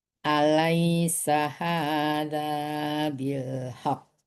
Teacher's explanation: Ditahan dulu ya doang ya soalnya qfnya bertasdid ya. Bilhaq ditahan dulu kalau bilhaq langsung jadi hilang tasdidnya.